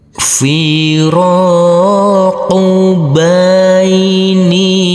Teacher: huruf nun yang berkasrah I ini bertemu dengan huruf Ya Sukun maka dibaca panjang dengan panjang dua harakat